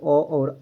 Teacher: अ और आ का जो उच्चारण स्थान है दोस्तों वह कंठ है